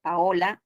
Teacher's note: Es un hiato la a y la o se separan